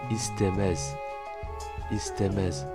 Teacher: Le premier e se prononce é et le deuxième e avec le z se prononce è